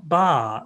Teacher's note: when you use the falling tone ba that means the father